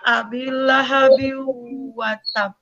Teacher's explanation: huruf-huruf tanwinnya itu sama sekali tidak terdengar malah harus mengikuti karena menghadapi huruf wawu yang muka di maka itu didengungkan ya itu ketika huruf nun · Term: Idgham Bighunnah